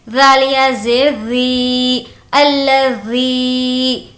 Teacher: یا مدہ ہونے کی وجہ سے اس کو کھینچ کر پڑھیں گے